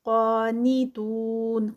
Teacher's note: قاف پہ قاف ہیوی 2 کاؤنٹس کا اسٹریچ. نی تو جو ہے وہ یہاں پر واو مدہ ہے اور سٹاپ پہ ہے تو اس کا 4 کاؤنٹس کا اسٹریچ.